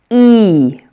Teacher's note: Long E is pronounced E. It almost sounds like I say E twice, or maybe that another E or a Y sound is added to make it a diphthong. Make sure to stretch it out like I do and to hold your muscles tight.